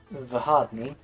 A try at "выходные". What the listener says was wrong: Yes, that was pronounced correctly, but you placed the stress wrong. On the final syllable, not